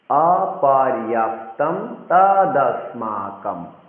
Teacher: হ্যাঁ, অনুসার যখন কোনো শব্দের পরে থাকবে সেক্ষেত্রে আমরা অনুসারের উচ্চারণ ম করব, অর্থাৎ ম হসন্ত করব